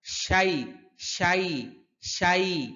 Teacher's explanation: অনেকে শাই এটা উচ্চারণ করতে গেলে অনেক সময় হামজার উচ্চারণ এসে পড়ে